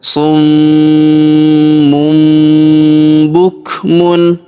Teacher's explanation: tanwin un huruf mun melebur masuk ke huruf bu ya. Kita tahan dan kita dengungkan 2 sampai 3 harokat.